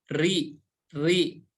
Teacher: ketika berharakat kasrah maka dibaca tipis